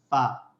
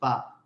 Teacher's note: فا نچلے ہونٹ کے گیلے حصے کو اوپر کے 2 دانتوں کے کناروں سے لگا کر ادا ہوتا ہے